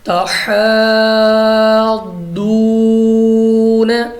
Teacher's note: حروف مدہ کے بعد ضاد آ گئی ہے تو ضاد ہمارے پاس حروف مستعلیہ ہے تو ہم نے اس کو پر پڑھا ہے اور واو ساکن سے پہلے پیش ہو تو واو مدہ اس لیے ہم نے اس کو کھینچا ہے.